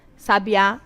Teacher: sabiá, a sílaba tônica é a última